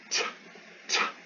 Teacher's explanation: there's a sharp burst of breath from your mouth. Hits your hand. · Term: aspirated